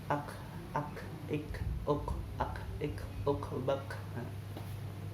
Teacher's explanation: Kemudian sifatnya yang pertama hamas, berjalannya nafas. Makanya pengucapan kaf yang betul ketika disukun adalah ak, ada nafas yang keluar.